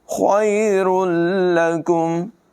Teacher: خا کو بھی پر پڑھیں گے، را کو بھی پر آواز میں پڑھیں گے